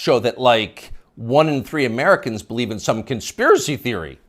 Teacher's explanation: the upspeak, the rising inflection at the end of the sentence